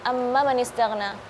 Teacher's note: Jadi yang seharusnya ada mad tabi'i 2 harakat, ini bisa jadi karena terburu-buru ketika menghafal, jadi mad tabi'inya ketinggalan.